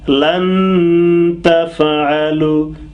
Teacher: You see, lan, I closed my nose with my tongue. Lan, and the noise is coming through the nose. Lan, and pausing couple of seconds.